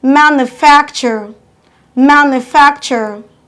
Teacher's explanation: Stress it counting from the back, 1, 2. Your stress falls on the second syllable in the word manufacture. · Stressing your fac louder than other syllable of the same word.